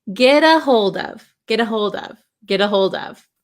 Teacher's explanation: maybe you notice this T sound sounds more like a D sound d d instead of TT so here we're gonna say G